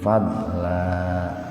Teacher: Sama iwad sama badal pun dibaca panjang, dua ketukan. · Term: mad iwad